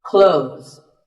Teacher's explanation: When we say clothes, the TH in the middle can often be silent. Clothes. But it's not wrong if you say these letters with a the sound.